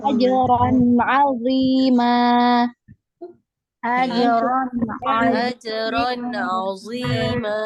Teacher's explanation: Ini nun sukun ketemu nun sukun atau tanwin bertemu dengan huruf ain ya. Jadi nun sukun atau tanwin kalau bertemu dengan huruf ain maka dibaca izhar atau jelas ya, dibaca jelas. Jangan dipanjangkan, jangan didengung ya, jelas.